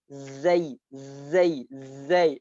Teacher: Kalau huruf zai, perut lidah kita kena pada gigi kena pada langit-langit atas.